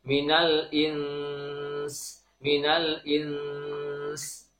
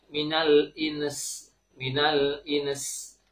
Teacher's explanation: Cara membacanya adalah kaidah ikhfa tetap berlaku, nun sukun bertemu dengan sin, maka gunnahkan terlebih dahulu, ditahan terlebih dahulu, baru disertai dengan suara sin sukun